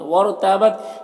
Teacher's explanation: یہاں پر را ساکن سے پہلے واو کے اوپر زبر ہے تو را کو پر پڑھیں گے۔